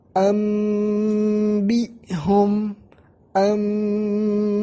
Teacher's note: Karena ba tidak mempunyai sifat dengung. Untuk itulah diubah ba ke mim, karena mim yang mempunyai sifat ghunnah, dan mim adalah saudara ba.